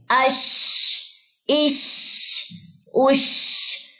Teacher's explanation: शीन में तफशी यानी कि आवाज फैलेगी